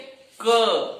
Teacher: जैसे ही क बोलते हैं अपने आप अ निकल जाता है